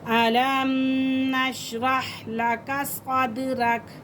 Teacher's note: कलकला हो रहा है दाल के ऊपर